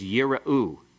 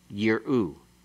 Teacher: The first one is yira'u. It has a vocal schwa. The second one has a silent schwa.